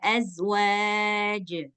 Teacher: bunyinya harus besar tapi enggak boleh ditambah Hamzah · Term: Qalqalah kubra